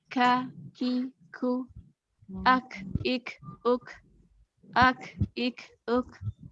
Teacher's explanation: Kalau kaf sama juga ya dengan mengangkat pangkal lidah, cuma dia agak ke depan sedikit. Pangkal lidahnya sedikit aja terangkat ketika membacanya dan ada hembusan nafas.